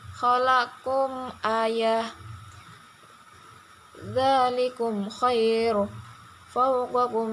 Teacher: Cara membacanya harus jelas tanpa gunnah, terutama ketika bertemu dengan huruf fa dan wawu. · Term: idhar syafawi